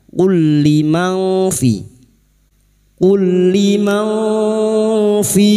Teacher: Berikutnya lam sukun bertemu lam, 2 huruf yang sama, yang pertama sukun idgham mislain. Masuk pada huruf lam berikutnya tanpa mendengung, tanpa ditahan.